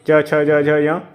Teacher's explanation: च छ ज झ य ये तालु में आएंगे।